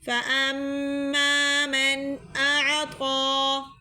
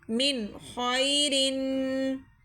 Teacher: نون ساکن کے بعد اگر حروف ہلکی میں سے کوئی حرف آ جائے تو وہاں ہم کیا کرتے ہیں؟ غنہ نہیں کرتے، صرف ظاہر کر کے پڑھتے ہیں غنے کو